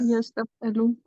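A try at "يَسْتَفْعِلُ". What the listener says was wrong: यस्तफ़इलु, ठीक है? यहाँ पर आइन पर कसरा आ जाता है, यस्तफ़इलु।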